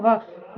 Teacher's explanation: दंतोर मतलब जिसको बोलने के लिए दांत और और ओठ दोनों का प्रयोग किया जाता है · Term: दंत ओस्ट